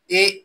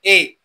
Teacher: कंठ आणि तालू हे दोन जे उच्चारण स्थान आहेत त्यांच्या साह्याने ते दोन बाहेर पडत आहे. ए कंठ पण मदत करायला आणि टाळूला पण आपली जीभ स्पर्श करत आहे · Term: कंठ तालु